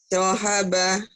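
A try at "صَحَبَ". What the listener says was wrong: So'aba ya. Bukan sohaba tapi so'aba.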